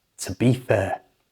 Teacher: we're going to change the two to the tuh.